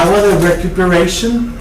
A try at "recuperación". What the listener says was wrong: Recuperación. Recuperación should be with a C, no C-I-O-N, not a T. Recuperación. No, that's recuperate, yeah.